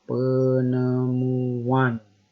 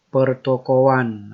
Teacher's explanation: Pertokoan, ada penambahan juga bunyi W di situ.